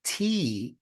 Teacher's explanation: my tongue had to touch the back of my two front teeth